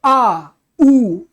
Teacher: लगता है जबान पीछे से खींच रही है। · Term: पश्च स्वर